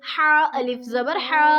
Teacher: ہا کے بعد اگر الف مدہ آتا ہے تو ہم اس کو ایک الف کے برابر لمبا کریں گے